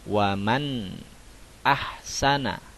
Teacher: Bunyi suaranya tetap jelas, tidak samar dan tidak mendengung. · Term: izhar halqi